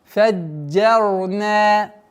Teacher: Джим мягкое. Удваиваем мягче. Уходим на твердое ра. Фаджарна. Потом долгота в размере двух огласовок фатха.